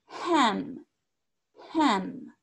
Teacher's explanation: la H, botan un poco de aire, como ham